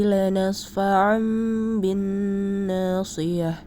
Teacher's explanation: Namun secara istilah, iqlab berarti nun sukun atau tanwin bertemu huruf ba. Bunyi nun sukun atau tanwin diganti dengan bunyi mim sukun, dan dibacanya disertai dengung.